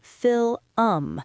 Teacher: A lot of learners will say fil-um. They turn a one-syllable word into a two-syllable word.